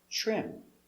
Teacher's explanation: trim t r together makes the sound ch